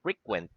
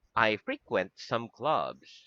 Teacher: the word frequent with the accent at the last syllable frequent is a verb whereas the word frequent the accent is in the first syllable